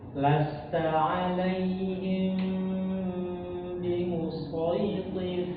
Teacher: bibir kita itu tidak menempel dengan tertutup, tetapi dia menempel, tetapi menempelnya itu seperti bergetar. Ya, kadar getarnya itu sangat halus sekali begitu. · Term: ikhfa syafawi